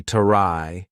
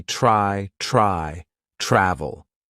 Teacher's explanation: the consonant blend TR is going to be more of the CH sound combined with R. So for example, TRY is not going to be tarai, it's going to be try, travel.